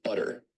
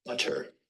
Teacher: in North American English you say butter now as compared to in receive pronunciation where you say butter that involves a full t stop